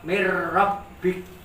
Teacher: Hilangkan huruf N-nya Pak, min-nya hilangkan. Nyambung ke huruf ro.